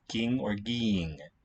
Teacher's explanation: What happens is the vowel letter E gets replaced by the letter I, by that vowel quality, and an N gets inserted, and that reacts with the gamma to give us an eng sound